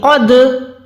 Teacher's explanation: एक वाइब्रेशन आ रही है, क़द, ये होता है कलकला का साउंड। यहाँ पर दाल साकिन को हमने कलकला की आवाज देनी है, बस इतना सा है यहाँ पे।